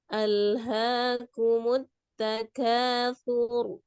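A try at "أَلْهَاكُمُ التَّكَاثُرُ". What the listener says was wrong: Alhaakumut takatsur. Sur. Jadi su-nya pendek ya. Ro-nya ngalir ya. Alhaakumut takatsur.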